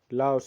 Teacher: ला और सा का उच्चारण स्थान दंत से है